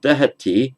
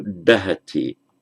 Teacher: In Pali, you can have dahati with an ordinary dental da. That's the dental da. But also dahati. The D has just become retroflex.